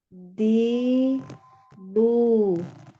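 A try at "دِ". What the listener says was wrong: Naik lagi. Yang kasroh dinaikkan pangkal lidahnya. Di. Di. Ya, di ini dal jadinya dia. Di. Di. Ditekan di tepi lidah. Tepi lidahnya tekan. Ini masih depan. Di makhrajnya huruf dal. Nah, ini masih di huruf dal ya. Dal itu makhrajnya. Jadi yang nanti tekan ini di sini itu di area yang harusnya disentuh di situ.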